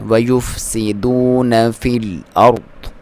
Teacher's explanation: سین کو باریک سیٹی کے ساتھ